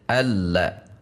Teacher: Lam memiliki sifat bainiyah sehingga saat tasydid ada tekanan, karena di sini ada tasydid, ada tekanan. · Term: lam tasydid